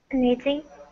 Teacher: so the double T kind of becomes that D sound. You can say knitting, too.